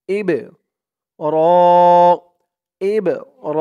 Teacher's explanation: বাটা কলকলার হরফ ধাক্কা দিয়ে পড়তে হবে। ইব র ইব র র এক আলিফ টান, খারা জবর।